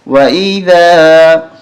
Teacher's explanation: ذال پہ زبان باہر نکال کے پڑھتے ہیں اس کو